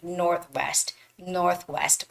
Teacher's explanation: you don't have to actually clearly make that th sound